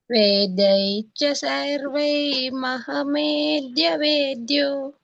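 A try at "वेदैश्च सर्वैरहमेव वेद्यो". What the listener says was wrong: రహమేవ వేద్యో. అక్కడ రా ఉందిగా మాతాజీ, మీరు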